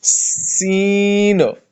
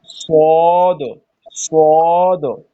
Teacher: سین باریک ہے. ٹھیک ہے، کوئی منہ بھر کے نہیں پڑھتے ہم، لیکن سواد کو منہ بھر کے پڑھتے، یہی وہ سیٹی کی آواز اس میں نکالتا ہو.